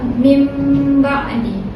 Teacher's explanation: Kita tukarkan bunyi nun tu kepada mim dan kena dengung dua harakat. Jadi cara baca ialah mim ba'di. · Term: iqlab